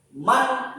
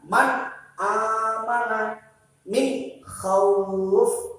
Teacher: Min khauf, nun sukun bertemu dengan kha. Cara membacanya dibaca jelas. Man, nunnya kelihatan. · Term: idhar